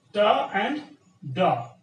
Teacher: They are available in English in a different way. In English, we recognize these sounds as alveolar, ta and da.